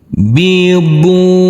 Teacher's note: huruf bod yang berdhamma u ini bertemu dengan huruf waw sukun harus kita baca panjang dengan panjang 2 harokat